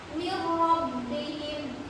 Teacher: huruf nun diidghamkan ke huruf ro tanpa didengungkan. Jadi langsung dibaca min rabbihim.